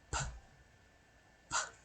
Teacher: P, p. No vibration. So it's a voiceless sound.